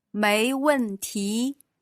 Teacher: that's a second then a fourth and a second tone